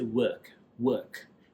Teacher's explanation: But the Brits will say work, work. So instead of OR, they pronounce it as UH. So work. That's the British way.